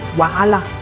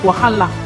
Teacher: Well, the Yoruba call it wahala. The Hausas lay emphasis on the H, making it sound like wahala.